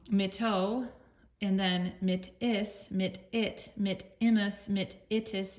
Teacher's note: it appears here that the connecting vowel is i and just a short i until you get to third person plural it changes to you